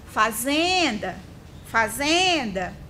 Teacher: Olha o zen aí sendo a sílaba mais prolongada.